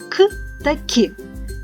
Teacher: ваше горлечко не тремтить тому що голос не працює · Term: глухі